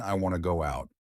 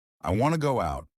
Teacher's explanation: Instead of want to, I said wanna. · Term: Connected speech